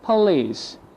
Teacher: The O equal UH replaced with the schwa sound. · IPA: ə